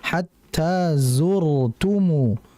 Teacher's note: Nah, ro di sini kembali kondisinya sukun. Ada huruf sebelumnya berharakat domah jadi tebal rnya ya